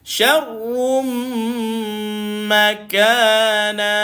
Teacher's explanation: dia dengung masuk di mim, maka dia rapat saja bibir dengung.